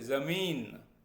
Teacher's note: जब हम जे का उच्चारण करते हैं तो हमारी जीभ दांतों के पास आने की कोशिश करती है, लेकिन छूती नहीं है।